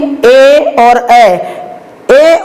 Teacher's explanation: ए और ए के उच्चारण में कंठ और तालु दोनों की सहायता ली जाती है, इसलिए इन्हें कंठ तालव्य कहा जाता है।